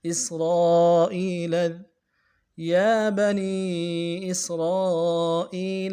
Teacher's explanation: سین سیٹی والا حرف سیٹی ادا کریں گے